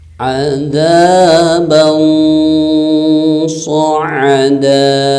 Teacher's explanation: Selain dibaca samar, juga harus didengungkan dan ditahan selama 3 harokat. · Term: ikhfa hakiki